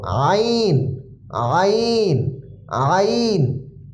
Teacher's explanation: একটু গলার ভিতরে আইন হা একটু চাপ দিয়ে উচ্চারণ হবে